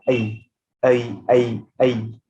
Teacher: अ and ई, अ and ई को मर्ज करके आई हुआ है, क्योंकि अगर आप अ और ई को फास्ट एक साथ बोलेंगे आई, तो आई का साउंड आएगा, आई, आई, आई, आई।